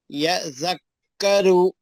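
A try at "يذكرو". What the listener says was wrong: سختی رہنا پڑھنے میں، تجدید کے پڑھنے میں جان رہنا، تھوڑا ڈھیلا نہیں پڑھنا.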